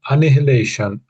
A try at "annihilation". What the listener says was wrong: I think for me the H is just too strong when you're saying it. say annihilation. Annihilation. That's what I would say, annihilation. There may be more than one way of saying it. So it's almost to me that the H is silent.